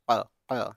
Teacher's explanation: بڑی قاف کی آواز حلق سے ہوتی ہے